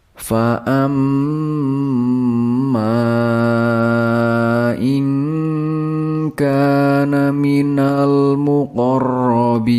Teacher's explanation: Jadi, harus dibaca dengan bunyi sengau. Kemudian huruf ma dibaca panjang selama 2 alif atau 3 alif atau 5 harakat atau 6 harakat